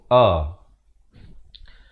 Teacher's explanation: Baik, lafaznya hamzah, makhrajnya di pangkal kerongkong